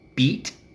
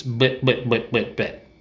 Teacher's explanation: So the muscles in your face are very loose when you say it. Beat is the tense one, beat, and bit is very loose.